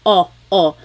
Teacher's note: Sometimes I think of it like having a ball in your mouth. Your tongue gets kind of pushed back and down a little bit and the inside of your mouth is open and wide. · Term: letter O